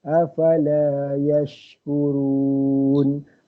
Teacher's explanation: Huruf shin tu tafashi, dia punya sifat huruf dia.